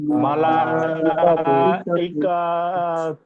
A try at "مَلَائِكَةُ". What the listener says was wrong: ইকা টান দেবেন না, কা তো ওটা হচ্ছে কি হারাকাতের পড়া, টান দেবেন না। মালাইকাতু